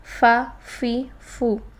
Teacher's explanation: فا کے مخرج کے لیے ہونٹوں کا تر حصہ جب ثنایا علیہ یعنی سامنے والے اوپر کے دو دانتوں سے لگے تو یہ فا ادا ہوتا ہے. فا کو ساکن حالت میں ادا کرتے ہوئے سانس جاری ہوتا ہے اور آواز بھی جاری رہتی ہے. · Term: فا کا مخرج